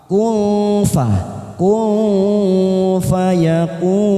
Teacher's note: Nun sukun bertemu fa lagi, ikfa ausat kita samarkan bunyi nun sukun 3 ketuk, siap masuk ke huruf fa, bibir kita membentuk huruf fa